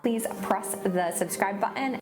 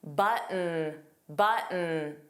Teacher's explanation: The T in button was not pronounced. It sounded like button, button. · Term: glottal stop